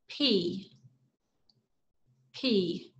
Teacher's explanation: your mouth closed momentarily and then open to release a puff of air air does not flow continuously from your mouth it stopped just